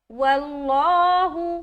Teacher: لفظ اللہ کا لام کو منہ بھر کر کہیں گے